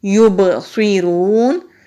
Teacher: یبصرون، با ساکن ہے تو کلکلا ہوگا